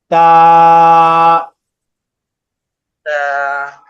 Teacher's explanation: জিহ্বার আগাটা, জিহ্বার আগাটা উপরের দাঁতের গোড়ার সাথে লাগবে। উপরের সামনের যে দুইটা দাঁত আছে ওই দাঁতের গোড়ার সঙ্গে লাগবে, এক আলিফ টান হবে।